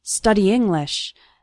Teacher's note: study English those two words kind of run together the e from study and the it from English kind of